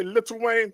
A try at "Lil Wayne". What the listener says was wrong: you putting way too many syllables in there